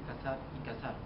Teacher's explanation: en el habla no se distingue entre las letras C, S y Z, y las tres son representadas por el fonema S. Ejemplo, donde en España se dice cazar y cazar, ellos simplemente lo dicen cazar y cazar. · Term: ceseo